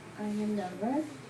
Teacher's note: you use Rising intonation at the end of your statement